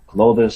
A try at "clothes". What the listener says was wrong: No. Close. Never closes. Never say closes. It's always close. you pronounce it just like the word close is close.